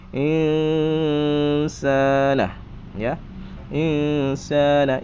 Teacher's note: sa itu berdengung dengan ikhfa, dengung dengan samar-samar.